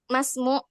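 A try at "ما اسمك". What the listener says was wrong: Masmuk. Bukan mu, Ustaz, kaf. Masmuk. Masmuk kaf ya.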